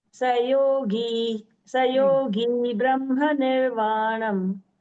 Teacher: Sayogi, that the gi is dirgha. Little bit you can elongate